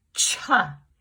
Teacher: Hold your hand over your mouth when you say cha. Ooh, that air's coming out fast, and there's a lot more of it than when you say shh.